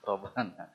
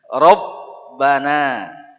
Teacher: Jadi huruf ba di situ harus ditekan